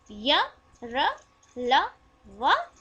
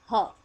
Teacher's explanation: अंतस्थ के चारों य, र, ल, व और ऊष्म का ह ये सघोष ध्वनियां हैं।